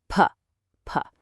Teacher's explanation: So, it's voiceless. Notice that your two lips touch together to make it, which makes it bilabial. And finally, notice how the air is completely stopped and then suddenly released in a tiny burst. · notice how the air is completely stopped and then suddenly released in a tiny burst. That makes it a stop. · Put your hand on your throat. You won't feel a vibration, right? So, it's voiceless. Notice that your two lips touch together to make it, which makes it bilabial. · Its official name is a voiceless bilabial plosive.